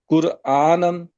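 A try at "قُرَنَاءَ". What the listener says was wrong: नहीं, ये कुरान नहीं है, कुरा, कुराना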